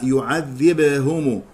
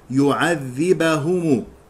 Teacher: يخطئ من يقرأ يعذبهم بسكون الباء، يعذبهم، يسكن الباء وأيضا يجعلها مقلقلة والباء مفتوحة